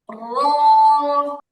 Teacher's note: জিহিবাটা বা জিহিবার আগাটা হালকা গোল হয়ে উপরের তালুকে স্পর্শ করবে